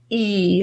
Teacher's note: It's actually quite a tense sound, meaning that the middle of our tongue is in a very tense position, going really high to the palate. E. Feel the tenseness of the middle of your tongue.